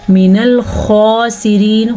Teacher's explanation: کے ساتھ پڑھیں گے۔ من الخاسرین، خا کو پر پڑھیں گے، سین کو سیٹی کی آواز کے ساتھ پڑھیں گے